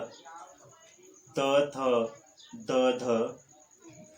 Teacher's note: जब जिह्वा नोक जो है ऊपरी दंत्य पंक्ति से स्पर्श करता है तब और निश्वास वायु को रोक देता है तब दंत्य ध्वनि का उच्चारण होता है।